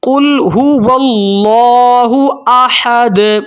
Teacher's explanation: اس کے بعد ہے دال، دال کے اوپر قلقلہ ہوگا، ٹھیک ہے۔ دال کے اوپر وقف ہو رہا ہے تو قلقلہ حروف میں سے ہے دال، تو قلقلہ کریں گے، اس کو ہلائیں گے، حرکت دیں گے۔